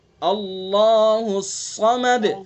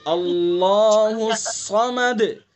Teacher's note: اللہ کے لام کو پر اور صاد کو بھی پر کریں گے۔ صاد کی صفت ہے بلندی، منہ بھر کے پڑھیں گے